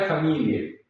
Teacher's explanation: ya no tiene el sonido Ae, sino que en la norma italiana se pronuncia e, ¿sí? E no es ae, sino e.